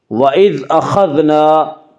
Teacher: خا کو پر پڑھیں گے، خا حروف مستعلیہ میں سے ہے۔